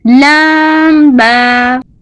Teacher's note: لام کو باریک اور با کو ہونٹوں سے ادا کریں.